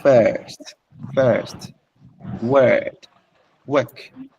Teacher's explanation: R, no. The R has a semblance of a vowel, so it carries the sound along, making it long. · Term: long vowels